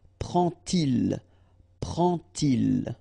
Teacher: And so this little d here is in red just to show you that you won't pronounce it like d to make the liaison, but you will pronounce it like t